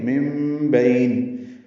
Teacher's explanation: یہاں سے پڑھنا ہے تو یخرج من بین، من اور بئی نون ساکن کے بعد با آنے کی وجہ سے اقلاب ہوا ہے تو مم پڑھیں گے